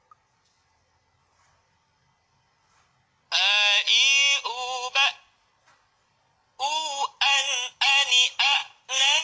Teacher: huruf hamzah dan ha besarnya keluar dari pangkal tenggorokan, tidak boleh masuk ke rongga hidung